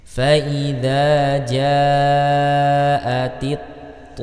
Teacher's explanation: sini alif lam kemudian bertung dengan huruf th faidza jaati th huruf tho ini adalah salah satu dari huruf idbaq atau huruf yang dibaca tebal maka tetap dibaca tebal sampai selesai